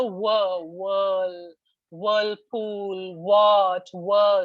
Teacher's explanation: If you were trying to say whir, then you would only be rounding your lips a little bit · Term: whir sound